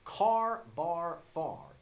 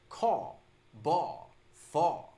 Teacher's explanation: The R sound at the end of the word is dropped. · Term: dropped R